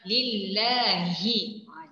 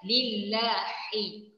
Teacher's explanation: Huruf h bahagian kerongkong tapi bahagian bawah.